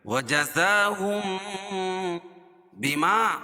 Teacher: میم ساکن کے بعد با ہے تو ادغام شفیع ہوگا، یعنی اس میں غنہ کریں گے